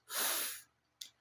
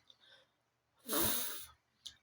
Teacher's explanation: In order for us to produce the sound of f we need to touch our upper teeth lightly to our lower lip, like this, since it is labiodental. Now, it is voiceless because you won't feel any vibration in your throat, only air flows out.